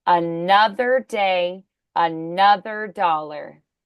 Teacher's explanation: So then we're accenting nuth. Nuth is our accented syllable.